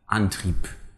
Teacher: Whenever put at the end, it almost indistinguishably makes slightly less of a P sound than a P would. Antrieb with a P would sound like Antrieb.